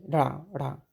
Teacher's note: ठीक है, जीभ ऊपर उठ के ढा ढा, तो जीभ उठकर नीचे झटके से गिरती है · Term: उत्क्षिप्त